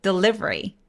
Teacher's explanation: 강세가 이음절 아이에 와요